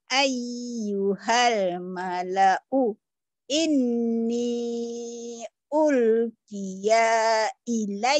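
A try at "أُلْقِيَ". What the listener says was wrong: Salah. Ulkiyanya salah. Pendek. Ulkiyanya pendek. Ulkiya ilai.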